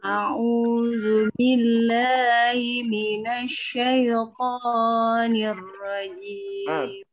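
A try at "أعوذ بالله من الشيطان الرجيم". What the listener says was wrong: Ko-nya terlalu panjang. Syaitoni. Itu aja. Jadi, a'udzu billahi minasyaitonir rajim. Jadi jangan terlalu panjang juga.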